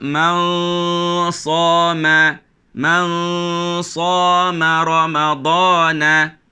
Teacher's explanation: Dengung itu menjadi tebal kerana dia berada di tepi huruf sad.